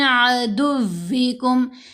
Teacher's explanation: واو سے اسٹرانگلی ملانا ہے، عدوکم نہیں کرنا، عدوکم نہیں، عدوی، دال کو واو سے اسٹرانگلی مضبوطی سے ملائیں گے کیونکہ مشدد ہے نا واو